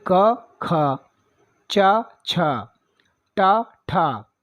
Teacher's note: अघोष ध्वनियाँ होती हैं, न कंपन होता है और न ही वाइब्रेशन जैसे हम बोलते हैं।